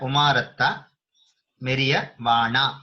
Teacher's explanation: with a dirgha at the end, with a long a vana